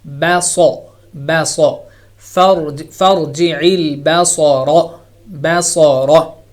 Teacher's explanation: ba is not heavy, sad is heavy. So you're going from light letter to a heavy letter, so make sure that the light remains light letter, the sound remains light, and the heavy letter becomes heavy.